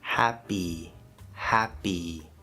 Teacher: It ends with a Y letter, but it ends with the E vowel sound, the first vowel sound on the vowel chart.